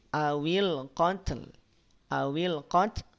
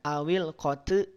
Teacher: tidak ada tnya tapi yang memercik hanya aliran nafasnya Kenapa mesti dipercikan Kang karena dia punya sifat hams dan di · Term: percikan nafas